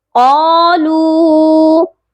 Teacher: قاف کو موٹا کر کے پڑھیں گے اور ایک الف کے برابر لمبا بھی کریں گے